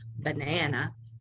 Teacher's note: if i said banana that b was a fairly strong sound it was you know around 40 some odd decibels and it's kind of low in pitch